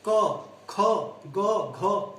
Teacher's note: कंठ से, गले से बोले जाने वाली ध्वनियां कंठ, ये यहाँ से बोले जाने वाली ध्वनियों को हम कंठे ध्वनियां कहते हैं। इसमें जिह्वा का पश्च भाग कोमल तालु को स्पर्श करता है।